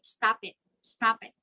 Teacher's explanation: a consonant in the second word starts with a vowel so instead of producing it as two separate words it would sound as if there it's just one word like again instead of saying stop stop it you connect p